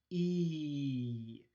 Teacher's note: the sound ee that is a high front unrounded vowel